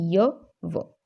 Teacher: जिन व्यंजनों के उच्चारण में वायु बिना रगड़ खाए बाहर निकलती है तो उन्हें संघर्षहीन व्यंजन कहा जाता है। मतलब संघर्ष नहीं करना पड़ता, हमें घर्षण नहीं होती किसी प्रकार की, तो इन्हें क्या कहते हैं, अर्ध स्वर भी कहा जाता है।